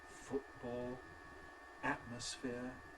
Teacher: I certainly do use glottal stops in words like ‘foo[ʔ]ball’, ‘a[ʔ]mosphere’